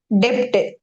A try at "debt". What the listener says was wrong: அந்த B-ய உச்சரிக்க கூடாது. யூஎஸ்லயும் சரி, யூகேலயும் சரி, அமெரிக்காலயும் சரி, பிரிட்டன்லயும் சரி. கடன்னு சொல்ற டெட்னு சொல்லணும். டெப்ட்னு சொல்லக்கூடாது. டெட். டெட்னு தான் சொல்றேன். டெட்.